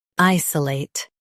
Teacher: Emphasize I and soften s o late.